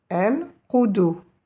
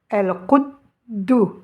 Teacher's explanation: Sans la shidda, on dira el-qudu. Mais avec la shidda, je vais insister deux fois plus sur cette lettre del. Je vais faire comme si j'avais le del avec une soukoun, je vais dire qud, et l'autre del avec le ou, do.